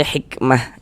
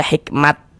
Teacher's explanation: Jadi kaidahnya huruf tam marbutah itu kalau kita berhenti, kalau kita berwakaf di huruf tamarbutah maka dia menjadi huruf H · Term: ta marbutoh